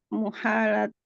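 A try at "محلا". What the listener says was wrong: Mahalata bacanya. Bukan muhalata, mahalata.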